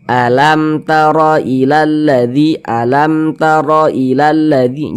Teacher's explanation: huruf ba bukan huruf Mim maka semua hukumnya namanya izhar syafawi karena dia izhar maka dibaca jelas dia tidak berdenggung baca pendek saja